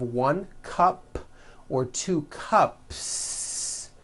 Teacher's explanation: there's no voicing at the end of that word